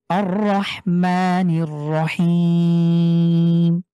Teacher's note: দেখেন পুরো আয়াতে কিন্তু জাস্ট দুটি স্থানে টান একটি হলো মা এক আলিফ হিম তিন আলিফ এর বাইরে আর কোথাও টানা যাবে না